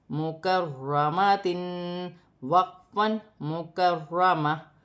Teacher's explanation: وقف کی صورت میں 2 زیر کی تنوین گر جائے گی اور تا ہا میں بدل جائے گی۔ را مشدد ہے، موٹا پڑھا جائے گا، جیسے مکرمہ۔